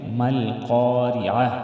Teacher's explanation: ما القارعة مل قا قاف کو موٹا ادا کریں گے ریعہ را کو ہم باریک ادا کریں گے